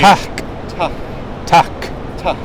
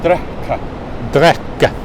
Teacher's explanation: basically like English, but there's a breath of air before you say it.